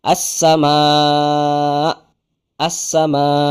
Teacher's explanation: jadi ketika wasal dan wakaf itu nanti berbeda wasal dulu berwakaf kalau wasal 4 sampai 5 harakat kalau wakaf 6 harakat plus hentakan pada hamzah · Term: Mad muttasil